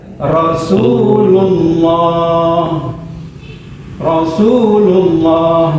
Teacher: Jadi lafaz jalalah lamnya dibaca tebal. · Kedua, sebelum lafaz jalalah berharokat dhammah maka lam pada lafaz jalalah ini dibaca tebal ya.